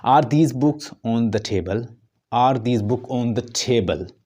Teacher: आर दीज बुक ऑन द टेबल, या हम जो भी इस तरह का कोई सेंटेंस बोलते हैं जो सिंगल इंट्रोक्टिव होता है उसमें जो स्ट्रेस है वो लास्ट पे चला जाता है, मतलब वो जो राइज है, जो टोन की जो राइज होती है टोन, तो वो लास्ट में चली जाती है, लास्ट में राइज होती है।